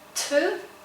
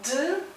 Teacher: t and d, these two sounds, they are very similar, but t sound is voiceless and d is voiced